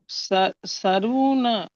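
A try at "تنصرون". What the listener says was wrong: তুম সরুনা, সা নয় স, তুম সরুনা, সারু নয় স, বলেন সরু সরু। হ্যাঁ সরুনা দেখেন তারুন পেশ, তুন তার উপরে পেশ পেশে তাদের উপরে যখন নিষেধ, নুনের উপরে সাকিন, সাকিন কাকে করে সাথে মিলে বলে তারুন পেশ তুন, সজ জব স, তুন স, র পেশ রু, ও সাকিনের ডান দিকে পেশ আছে ও মাথা, তুন সরু, তুন না, তুন সরু না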